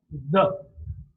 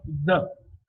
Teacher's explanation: The is a voiced sound because the vocal cords are held close together, and when the air passes through, there is a lot of vibration in the vocal cords. So the first criteria is state of the glottis, so it is voiced.